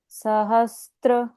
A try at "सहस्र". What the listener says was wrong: यहाँ पर त्र नहीं है, सहस्र, आधा स प्लस र। करेक्ट, यहाँ त्र नहीं है। सहस्र। अगर इंग्लिश में लिखा जाए तो हम कैसे लिखेंगे इसको? SAHASRA, सहस्र, इस तरह से।